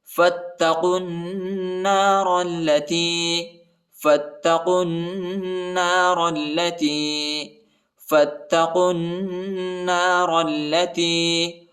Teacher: فا کو تا کے ساتھ ملانا ہے، الف نہیں پڑھا جاتا، تا کے اوپر شد آیا ہے، اس کو شدت کے ساتھ پڑھنا ہے ، اور قاف کو جو ہے نون کے ساتھ ملانا ہے،